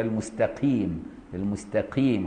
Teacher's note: بالقاف مترددة بينه وبين الكاف، يعني رققها شوية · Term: قاف رقيقة